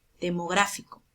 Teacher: la mayor fuerza de voz está en la ante penúltima sílaba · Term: esdrújula